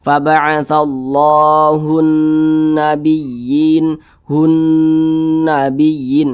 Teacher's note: kita lihat lagi di samping huruf nun bertasydid hukumnya ghunah musyaddadah maka cara membaca huruf nunnya itu dibaca ghunah Nah jadi suaranya itu kita tahan kita panjangkan sejenak · Nah hunnya itu kita kita tahan kita panjangkan sejenak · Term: gunnah